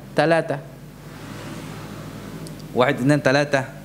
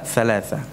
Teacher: huruf tha yang diubah atau diganti menjadi sin atau ta